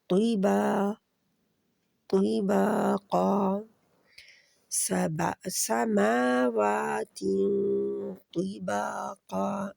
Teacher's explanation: با 2 حرکات کے برابر کھینچا جائے گا کیونکہ الف سے پہلے زبر آ رہی ہے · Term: مد